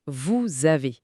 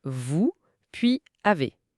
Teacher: Isolément, on dirait vous puis avez. Mais la liaison force à lier le S final au A initial, ce qui produit un son Z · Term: liaisons